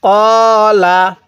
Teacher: কফের মধ্যে টান হবে, লামের মধ্যে কিন্তু টান হবে না